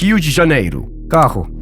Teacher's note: At the start of a word or when doubled, it's a H.